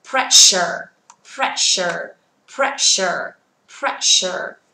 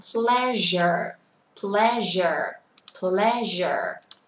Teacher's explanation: Cặp cuối cùng chúng ta có âm sh và âm j, một âm bật hơi thật mạnh, một âm không cần bật hơi